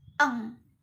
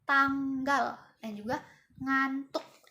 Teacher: eng ini merupakan nasal. Nah, yaitu udaranya keluar dari rongga hidung. Nah, masuk ke dalam bersuara.